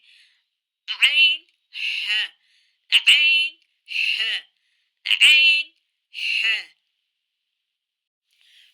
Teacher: یہاں سے بھی 2 حروف ادا ہوتے ہیں، عین ح، عین ح، یعنی کہ وسط حلق۔ مڈل پارٹ آف تھروٹ سے یعنی کہ وسط حلق سے 2 حروف ادا ہوتے ہیں